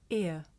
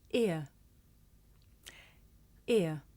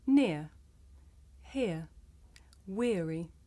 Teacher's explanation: This is a diphthong, a double vowel sound. The shape the mouth makes changes from the beginning of the sound to the end. It's pronounced ear.